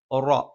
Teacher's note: നാവിന്റെ തലയുടെ മുതുക് മേലെ മുൻപല്ലിന്റെ മോണയിലാണ്